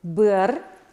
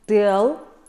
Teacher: В конце дифтонга слышится очень короткий элемент «а» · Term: Дифтонг «ы»